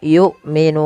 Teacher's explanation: Hamzah harus ditahan suaranya dan ditahan nafasnya. Karena sifat hamzah ada syiddah dan jahar.